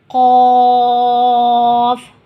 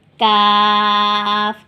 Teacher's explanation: قاف، کاف، دونوں کی آواز سیم ہے، لیکن ادائیگی کرتے وقت ہمیں قاف پر پڑھنا ہے اور کاف باریک پڑھنا ہے